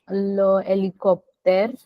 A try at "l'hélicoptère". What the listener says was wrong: It's not le hélicoptère, it's l'hélicoptère.